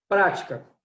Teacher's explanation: Qual é a tônica? A sílaba pra. Né? Já ti e cá são sílabas átonas, ou seja, as fracas. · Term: sílaba tônica